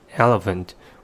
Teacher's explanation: we may put the stress on the first syllable